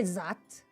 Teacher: in the word that, you substituted the voiced TH with a Z sound.